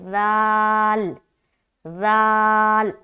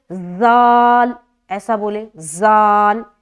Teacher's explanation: सीटी की तरह नहीं निकालना बगैर सिटी के निकालना